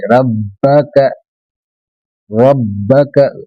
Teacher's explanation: रब्बक बा पर तशदीद है, होंठ बंद करके 2 बार खोले